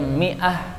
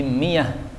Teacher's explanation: orang Arab sangat susah mengucapkan huruf hamzah sehingga sering diubah menjadi ya